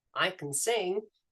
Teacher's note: the vowel sound in can is dropped into a schwa